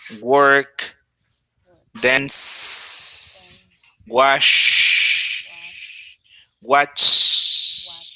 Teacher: They have vibrations at the beginning but not at the end. They are unvoiced.